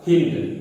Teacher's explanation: ई पर बलाघात के कारण ऊ का लोप हो गया तो बन जाता है हिंद